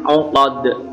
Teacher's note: huruf dal juga huruf qalqalah anak-anak, jika diwaqafkan atau di akhir ayat memantul. Fil 'uqad qalqalah kubra.